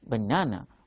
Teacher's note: While we are saying banana, the second syllable stands out. That is why we have to mark on that second syllable, that is stress mark.